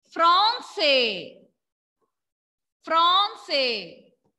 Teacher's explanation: When A and N come together, pronunciation will be O. Nasal O sound.